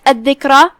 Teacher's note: یہاں دال پہ تشدید ہے، ہم دال کو بھی 2 حرف کی مقدار میں ادا کریں گے